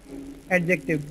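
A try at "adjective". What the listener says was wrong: एडजेक्टिव नहीं होता, हम डी प्रोनाउंस नहीं करते हैं, हम सिर्फ प्रोनाउंस करते हैं जे। डी जो होता है वो साइलेंट होता है, तो इट्स एडजेक्टिव।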